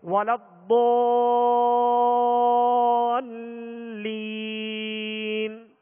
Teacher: یہاں مد لازم ہے، زیادہ دراز کرتے ہیں، اور بہت کو پر پڑھیں گے، حروف مستعلیہ میں سے آواز اور منہ کھول کر کھینچیں گے. آگے لام، لام تشدید ہے، لام پر مشدد حرف ہے، لہذا دوہرا پڑھیں گے